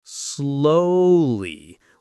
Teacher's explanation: with a stress on the first syllable, not slowly like some learners say.